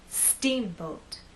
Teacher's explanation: the second part to be softer let's try that Steamboat now we also need to make that first part longer and then the second part will be shorter · The first part of the word is the stressed part. So when we say steamboat, I want the first part to be loud and the second part to be softer. Let's try that.